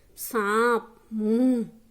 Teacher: इसका उच्चारण नाक और मुख से होता है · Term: अनुनासिक